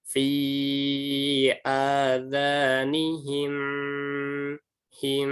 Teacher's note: Ditahan dan masuk ke hidung, suaranya mendengung.